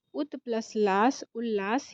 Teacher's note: जब भी त के बाद ल आएगा तो जो ये त है वो आधा ल में बदल जाएगा